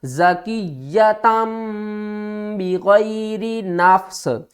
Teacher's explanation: تنوین کی آواز کو میم کی آواز میں بدل کر پڑھیں گے